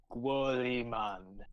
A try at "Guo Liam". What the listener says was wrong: Guo Liam. The N is silence. The N is silent.